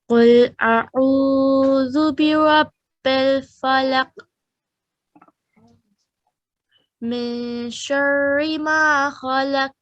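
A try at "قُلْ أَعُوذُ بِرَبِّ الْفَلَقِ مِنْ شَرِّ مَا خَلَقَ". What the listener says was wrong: نہیں خلق اب لاک کرتی ہیں خلق. یہ دیکھیں میں کہ زبان جو اوپر تالو کے ساتھ ٹچ ہو رہی ہے نا اس کو علیحدہ کریں ساتھ ہی.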